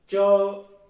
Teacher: वो क्या होते हैं तालव्य होते हैं उनको तालव्य कहते हैं वो तालू की छत के पिछले भाग से बोले जाते हैं